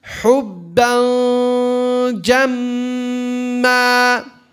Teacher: Remember, for the ikhfa, the tanween, the tip of the tongue should not be touching the palate.